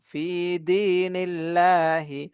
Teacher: আল্লাহ শব্দের লামটাকে এখানে বারিক করব